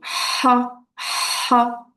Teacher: c'est la lettre H qui sort vraiment du fond de la gorge